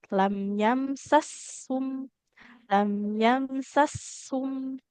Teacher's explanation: antara mim sukun dengan sin sukun lebih lama durasi mengalir suara untuk huruf sin sukunnya ya.